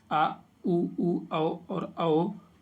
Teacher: जिन स्वरों का उच्चारण में जीभ का पिछला भाग सामान्य स्थिति से ऊपर उठता है पश्च स्वर कहलाते हैं